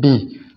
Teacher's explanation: یہ آواز جو ہے نا وہ ٹوٹ کر نیچے گرتی ہے، بی. اس لیے اس کو کسرہ بھی بولتے ہیں.